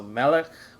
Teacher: Melech, which is king, and Na'ar, young man, also have the accent on the first syllable.